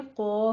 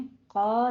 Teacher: क़ाला में आपने क़ौफ को पुर पढ़ना है, अलिफ भी साथ ही पुर हो जाएगा। ठीक है, क़ौ कहना है आपने, क़ा नहीं कहना, क़ौ कहना है, दोनों पुर हो जाएंगे।